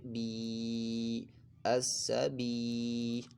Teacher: یا ساکن سے پہلے زیر ہے، یا مدہ ہو رہا ہے، ایک الف دو حرکات کے برابر اس کو کھینچ کر پڑھنا ہے. اور یہ لام اس میں جلالت کا نہیں ہے تو اس لام کو ہم نے باریک پڑھنا ہے.